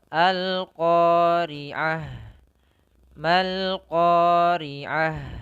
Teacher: sifatnya ada jaroyanun nafas, mengalirnya nafas kita ketika huruf ha ini disukunkan